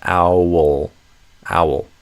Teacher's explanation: the second syllable in a way doesn't have a vowel. You could imagine it as the L is the vowel, so a syllabic consonant. So the way I prefer to think of words like this is owl becomes kind of like, however you want to imagine the diphthong, I'm going to call it mouth as a code word, then the W, and then a dark L.